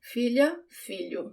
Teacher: The sound of the LH, it's not the tip of my tongue that touches the roof of my mouth. It's sort of the middle of my tongue. It's almost if I have ly in English instead of lh in Portuguese, but it's subtle.